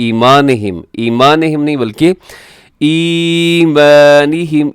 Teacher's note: ای یا مدہ ہے تو آپ اسے تھوڑا کھینچ کے لازمی پڑھیے گا